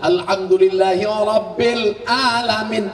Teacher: Ra, tafkhim. Hurufnya tebal.